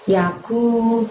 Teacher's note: Ku pakai kaf di sana, maka kita keluarkan hurufnya dari pangkal lidah namun tidak menyentuh langit-langit. Lebih tipis daripada pengucapan qaf pada qari'ah tadi ya.